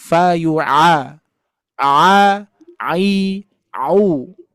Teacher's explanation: Coba Fayua Fayua ketika divokalkan a itu adalah hamzah. Jadi huruf ain itu masuknya di awal saja. Masuknya di awal di makhraj tenggorokan bagian tengah baru kita bunyikan harakatnya seperti hamzah fa yua a a i u gitu ya.